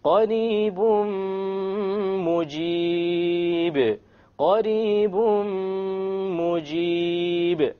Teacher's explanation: We don't say قَرِيبٌ مُجِيد. We drop the end sound and we merge the tanween immediately onto the meme with a ghunna. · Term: idgham with ghunna